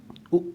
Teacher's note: ओष्ठ से उच्चारण उ उ का होता है